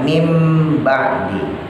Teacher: nun mati yang ketika dia bertemu ba maka lebih condong kepada huruf Mim